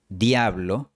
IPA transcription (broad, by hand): dja.βlo